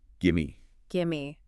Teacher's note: the vowel in give might weaken slightly, and the V sound often disappears or merges right into the M sound. Gimme. Gimme.